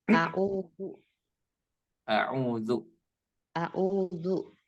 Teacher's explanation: Sedikit koreksi ya, ketika membaca isti'adah kita bedakan antara za dan za ya. Di sini kita harusnya membaca zal ya, bukan zai, tapi zal ya.